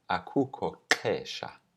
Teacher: the first vowel of the noun is dropped. So we just say akukho xesha, there is no time.